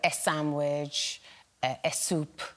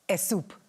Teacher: some Spanish speakers have trouble pronouncing the S at the front of English words, that they will add a vowel sound at the front